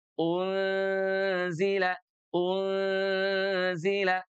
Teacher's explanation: Unzila, unzila bukan hanya menutup tetapi juga berkonsekuensi kepada bunyinya di mana harus dengung ya ditahan selama dua harakat dan keluar dari hidung. Sengau. · huruf nunnya sudah pindah dari langit-langit ya menutupi tempat keluarnya huruf za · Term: ikhfa